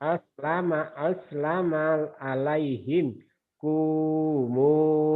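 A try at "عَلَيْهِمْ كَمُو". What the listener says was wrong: Kamu bukan kumu. Kamu.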